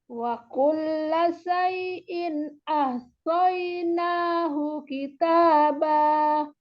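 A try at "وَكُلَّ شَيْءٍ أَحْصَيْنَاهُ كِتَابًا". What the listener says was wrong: Coba syanya disempurnakan makhrajnya syai'in.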